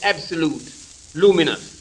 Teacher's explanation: as an example of recent vowel change we may notice the substitution of oo for you · we may note the substitution of oo for you in such words as absolute, luminous